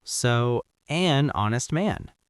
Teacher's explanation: >> Honest starts with H. But wait the H is silent. So, the first sound is O, which is a vowel.